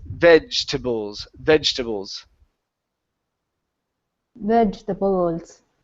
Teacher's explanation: the e here in the middle is not pronounced